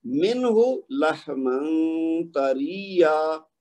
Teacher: پہلے نون کا اظہار ہوا ہے اور دوسرے نون کا اخفا ہوا ہے